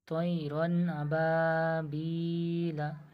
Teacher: রদ যাবার রন, রদ যাবার তানবিন, তানবিনের পরে এই 8টা অক্ষরের মধ্যে হামজা এসছে, এটা হামজা যেহেতু আলিফ কিন্তু এর উপর জবর দিলে হামজা, তো ওই জন্যে তানবিনের আওয়াজকে বিনা গুন্নায় তাড়াতাড়ি পড়তে হবে